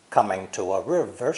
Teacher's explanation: the emphasized words are coming and river the other words are unstressed